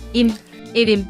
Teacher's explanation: The final vowel of ev, meaning house, is an unrounded vowel